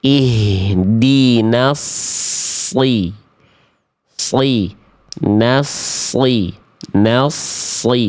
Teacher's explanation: Sod itu tebal karena naikin pangkal lidah